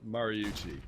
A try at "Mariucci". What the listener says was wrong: You keep saying Marucci or